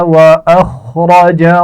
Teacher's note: وَأَخْرَجَ خا اور را دونوں کو موٹا پڑا جائے گا